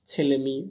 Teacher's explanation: এগুলো পাশাপাশি দুটো স্বর ছিল, একটা স্বর লোপ পেয়েছে, বিশেষ করে পরস্বর লোপ পেয়েছে